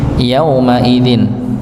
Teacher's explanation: maka yauma idzin ini ya dibaca pendek 1 harokat saja. Ya, walaupun di situ ada wawu sukun, tapi sebelumnya dia tidak bertemu dengan pasangannya yaitu dhammah.